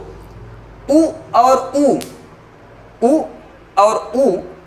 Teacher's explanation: के देखेंगे तो आप तुरंत आपके होंठ गोलाकार हो जाते हैं यू और यू को बोलते समय आपके होंठ वो गोलाकार हो जाएंगे